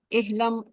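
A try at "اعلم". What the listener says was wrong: احلم نہیں کہنا، آئین ہے، ہاں نہیں ہے. علم.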